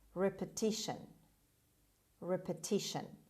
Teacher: The stress is on T, repeti, on the third syllable. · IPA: /ˌrepəˈtɪʃən/